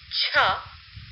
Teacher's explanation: For example, the affricate ch Even though there is a production of air, the production is completely blocked at a certain place and then released